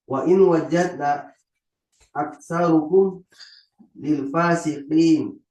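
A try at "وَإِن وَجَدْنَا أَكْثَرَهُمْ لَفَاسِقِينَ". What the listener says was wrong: Aksarohum la bukan lafa pakai la misalnya asli lafa sikin. Aksaro aksarohum misalnya asli la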